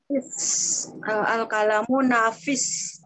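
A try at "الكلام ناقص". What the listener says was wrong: Bukan nafis, pakai qaf. Nanti dicari pak nafis loh.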